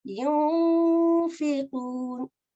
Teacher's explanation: So I can't say yun. I won't say the N sound. I won't finish off saying the noon.